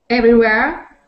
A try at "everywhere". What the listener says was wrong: Every. So make sure you get that R sound. Not everywhere. So not everywhere, but everywhere. Everywhere.